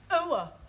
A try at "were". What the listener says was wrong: Almost. Try again, but this time, don't say ower, just were.